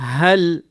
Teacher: ہا آپ کے سینے سے نکلے